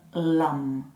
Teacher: Ça veut dire que le L se prononce en plaçant le bout de la langue sur l'avant du palais, juste derrière les dents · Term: son dental